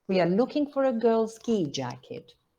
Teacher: I think there's a nucleus in ski, which is a fall. · And then we have an onset on looking. And rhythmical stress on girls. Okay. You can have another rhythmical in jacket or not.